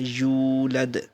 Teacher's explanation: واؤ کے اوپر جزم ہے اور اس سے پہلے پیش ہے تو واؤ مدہ ہوگا، اس کو تھوڑا سا ایک الف کے برابر کھڑا، ایک الف کے برابر اس کو لمبا کرنا ہے